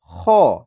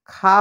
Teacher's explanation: খ হচ্ছে মোটা হরফ এজন্য এর হরকতে আকারের উচ্চারণটা হবে না যেমন খ জবর খ তাহলে খ জবর খা হবে না খ